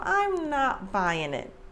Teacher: the emphasis is on not